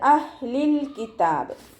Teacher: അഹ്ലിൽ കിതാബ് ഹാഫ് സുക്കൂന് കൊടുത്തിട്ട് ഉച്ചരിക്കുക കേട്ടോ. ലാമിനും ഹാഫ് സുക്കൂന് കൊടുക്കാൻ ശ്രദ്ധിക്കുക.